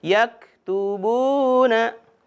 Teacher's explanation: jangan sampai memantul huruf yak. Tidak boleh ada ke ya, tidak boleh yak. Tapi mengalir, sifatnya hamas ya, mengalir.